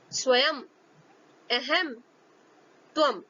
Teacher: अनुस्वार का प्रयोग किसी शब्द के अंत में होने पर मां की ध्वनि निकलती है